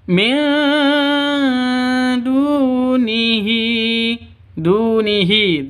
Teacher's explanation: Cara bacanya samar didengungkan, siap-siap ke huruf dalnya karena bacaan ikhfa hakiki